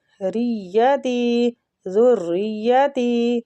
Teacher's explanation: زال کو را کے ساتھ اور را کو یا کے ساتھ شدت سے ملائیں گے اور سختی کے ساتھ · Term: تشدید